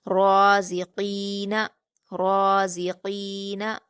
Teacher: قاف کو ہم پر پڑھیں گے کیونکہ یہ حروف مستعلیہ میں سے ہے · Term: بڑی قاف